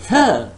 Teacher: When I say th, that is not labiodental, that is a dental sound. That the tip of the tongue is touching the upper teeth, inside of the upper teeth.